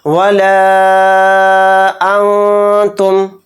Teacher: تو اس کو ہم لام الف زبر لا کو 3 الف کی مقدار کھینچیں گے۔ ولا انتم، اس طرح سے لام کو کھینچیں گے یہاں پر، اور یہاں پر نون ساکن کے بعد تا ہے اور تا حروف اخفا کے 15 حروف میں سے ایک حرف ہے، تو نون کو میں اخفا کر کے پڑھیں گے۔ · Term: مد منفصل